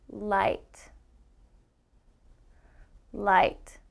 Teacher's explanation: light light now if this is the back of my teeth my tongue is touching the back of my teeth and then i pull my tongue back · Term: l sound, L sound